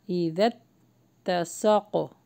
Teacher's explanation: تا کو جو ہے ہم پریس کر کے پڑھیں گے کیونکہ اس کے اوپر مشدد ہے